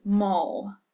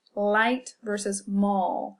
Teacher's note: So we have the L that's at the front of the mouth that we pronounce at the beginning of a word, as in light. We also have what we call a dark L, which is an L pronounced at the back of the throat in words such as mall.